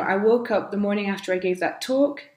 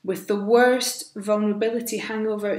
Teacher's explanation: she's using a lot of deliberate pauses for effect